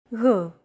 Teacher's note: It's like a very soft, continuous, and loosely held G